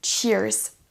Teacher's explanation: avec le double E, on a un i long